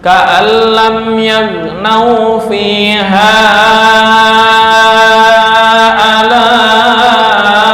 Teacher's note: Karena ini mad jaiz munfasil riwayat Syatibiyah. Yaitu panjangnya 4 sampai 5 harokat. Beda dengan Thaibatun Nasyr.